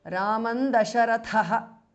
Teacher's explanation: Now Ramam ends in Anuswara followed by Dasharatha. So the Anuswara changes to N, which is the Anunasika or the nasal of the Tavarga. Raman Dasharatha because of Sandhi.